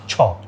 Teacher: ছ উচ্চারণ করতে গেলে আমাদের জিওভাটা আমাদের মুখের উপরের চোয়ালের সাথে একটু টাচ করে ভিতরের দিকে আসে।